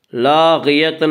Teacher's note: غین کو پر پڑھیں گے، غین حروف مستعلیہ میں سے ہے